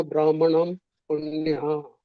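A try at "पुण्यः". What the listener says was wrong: ನಾಮ್ ಇಲ್ಲ ಪ್ರಭುಜಿ, ನಾಹ ವಿಸರ್ಗ ಇದೆಯಲ್ಲ, ಹಾ ಹೇಳ್ಬೇಕಲ್ಲ. ನ ಪುಣ್ಯಾಹ. ಮ ಇಲ್ಲ ಪ್ರಭುಜಿ, ಅಲ್ಲಿ ನೋಡಿ 2 0 ಇದೆಯಲ್ಲ. ಪುಣ್ಯ ಪುಣ್ಯ ಅಂದ್ರೆ ಮಧ್ಯದಲ್ಲಿ ಹ ಉಚ್ಚಾರಣೆ ಆಗಲ್ಲ.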